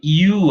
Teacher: the U at the beginning is like a diphthong, but it starts with a jot.